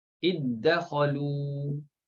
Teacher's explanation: Bertemu dengan huruf ta, bertemu dengan huruf dal, maka idghamkan. Bertemu ta, dal contohnya iddakhalu.